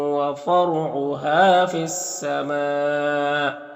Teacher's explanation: میم میں جو مد یہ مد متصل ہے تو اسے 3 سے 4 الف کے برابر کھینچ کر پڑھیں گے